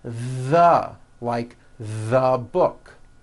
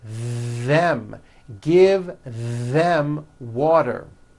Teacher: they should all be voiced and all made with your tongue coming through your teeth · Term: voiced TH